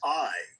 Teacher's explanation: That's actually two sounds. Ah and E put together real fast.